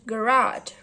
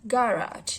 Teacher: in American English, the word garage receives stress on the second syllable, while stress falls on the first syllable of garage in British English.